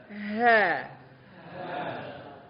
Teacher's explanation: Dan dia nafasnya itu paling banyak menghabiskan nafas. Huruf ini paling banyak menghabiskan nafas. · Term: huruf ha